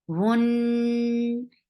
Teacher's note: Da, hun, for dhamma, circle lips, attached with noon will get sifa of gunna. And this gunna is akmal gunna, so give a longer time. Hun, and fatha is very short.